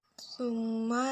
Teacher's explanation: huruf mim bertasydid dan cara membacanya dengan dengung serta ditahan 3 harokat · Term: gunnah